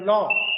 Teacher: it is a back vowel rounded between half open and half closed · articulated with the back of the tongue raised between half open and half closed position. Lips are considerably more rounded than we have.